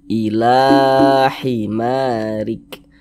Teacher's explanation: Mad thobii panjang dua harakat dua harakat tuh kira-kira sepanjang dua ketukan